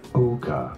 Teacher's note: You want to stress on the first syllable.